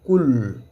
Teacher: On va pas lire la lettre nun, c'est éliminé. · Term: idgham bi ghayri ghunna